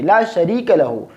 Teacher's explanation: را کو موٹا نہیں پڑھیں گے بلکہ را کو باریک پڑھیں گے